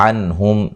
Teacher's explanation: نون ساکن کا اظہار ہے، میم ساکن کا اظہار ہے